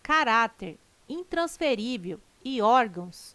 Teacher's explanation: caráter intransferível e órgãos tem sua sílaba tônica na penúltima sílaba são paroxítonas observação Poderia gerar dúvida a palavra órgãos mas ela não termina